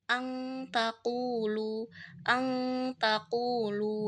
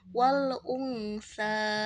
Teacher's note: Nah, itu harus ditahan sebentar sebanyak 2 harokat. Bunyi nunnya itu disamarkan jadi bunyi ang. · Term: ikhfa hakiki